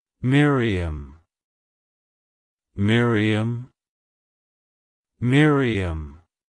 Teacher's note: To pronounce it correctly, emphasize the first syllable, my, followed by a short re and ending with um